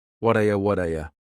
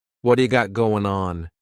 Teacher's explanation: That T at the end of the word what is going to change to a D sound. This is really typical of American English, where a T that's surrounded by vowel sounds is going to change to a D. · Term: flapped T